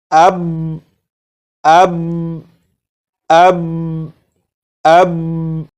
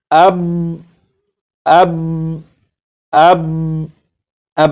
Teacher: با کو پڑھ کر آواز کو ختم نہیں کیا جا رہا، بلکہ با کو پڑھ کر آواز کو روکا جا رہا ہے